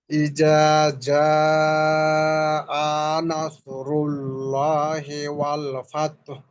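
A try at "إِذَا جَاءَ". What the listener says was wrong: একদম ফার্স্টে বলেছি যে ইজা, জালের উচ্চারণটা চিকন হবে, আর যা যেটা জিম ওটা হবে মোটা। ইজা যা, আপনার উচ্চারণে মনে হয় জাল জিম এক উচ্চারণ করে ফেলছেন, তো এটাকে পার্থক্য করতে হবে। ইজাটাকে চিকন করতে হবে আর যাটাকে মোটা করতে হবে।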